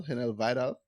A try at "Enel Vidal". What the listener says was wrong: It's Enel Vidal. So the H is silent.